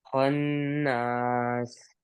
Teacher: خناس غنہ پورا رکھنا ہے، غنہ نہیں چھوڑنا